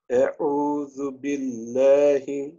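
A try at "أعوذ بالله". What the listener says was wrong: جی اس میں عین جو ہے اس کو بھی تھوڑا سا، یعنی حمزہ کی آواز نہیں آنی چاہیے. ہم جسے ہم پہلے کہہ رہے ہیں یہ حمزہ کی آواز ہے. اور عین، حمزہ اور عین میں تھوڑا سا فرق ہونا چاہیے.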